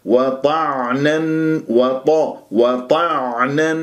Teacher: لان مخرجها العين عميق لازم تتعمق ولازم تحس بانزعاج في المخرج وكانه عم تبلع شيء ولازم يجري فيها صوت الفتره زمنيه بسيطه